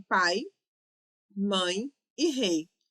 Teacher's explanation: Errado, porque em todas essas situações nós temos um ditongo decrescente, começando com uma vogal e descendo para uma semivogal